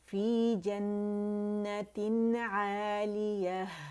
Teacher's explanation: نون کا اظہار کریں گے، پوری طرح اس کے مخرج پہ جائیں گے 1 کاؤنٹ کے لیے اور اسے شو کریں گے.